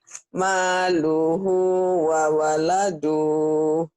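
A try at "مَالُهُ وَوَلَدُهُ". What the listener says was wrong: Kenapa panjang? Wawaladu. Ada yang manjangin nggak jadi? Ada yang manjangin? Maluhu wa waladuh. Maluhu wa waladuh.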